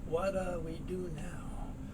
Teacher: T followed by a D, that goes away, you get that soft D sound